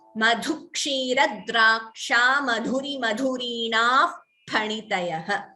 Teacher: Here Visarga followed by Pha, that we get an Upadhamaniya.